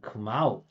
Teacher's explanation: the second part is always the primary stress